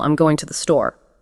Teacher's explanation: The stressed syllables are on go and store. These are the words carrying the keynote information, the rhythmic beats you absolutely need to catch.